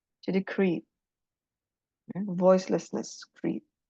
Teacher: ada extra information yaitu voicelessness of the liquid.